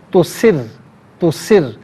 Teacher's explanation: یعلم ما تسرون، تو سرون میں را پر پیش ہے، را کو پر کر کے پڑھا جائے گا۔ اچھا، یہاں پر چونکہ تشدید ہے تو را کو 2 مرتبہ پڑھیں گے